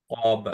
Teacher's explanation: কা হয়ে যাচ্ছে একটু, হ্যাঁ, ক সাউন্ড শোনাতে হবে যেহেতু হেভি